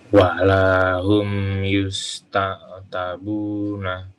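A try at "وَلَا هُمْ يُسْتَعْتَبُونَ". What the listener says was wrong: Ya, termasuk ain dipanjangkan. Yusta'tabuna.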